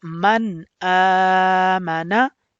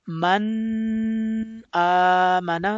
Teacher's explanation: you will read also this Tanween and Noon Sakin without the nasal sound, and that is called actually Izhar Rule.